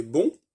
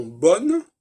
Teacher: bon a gardé la sonorité en français spéciale du on, et que bonne, eh bien le on disparaît, et donc c'est pas simplement un ajout de quelque chose, c'est aussi la perte d'une certaine sonorité.